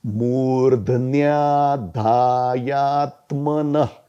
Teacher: ध का उच्चारण आएगा, आधा ध, फिर न का उच्चारण आएगा, आधा न, और फिर य